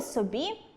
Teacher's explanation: У слові собі наголос падає на [і], тому ненаголошений звук [о] також стає схожим на [у].